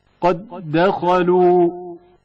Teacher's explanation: دال ساکن جو مدغم ہے، حرکت والے دال میں جو مدغم فیہ ہے ادغام ہو گیا ہے